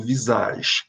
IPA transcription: vizaʒ